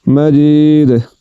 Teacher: تو دال پر جب وقف کریں گے تو اس کو جھٹکے کے ساتھ پڑھیں گے